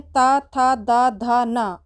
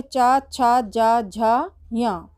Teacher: तवर्ग के स्थान पर चवर्ग हो जाता है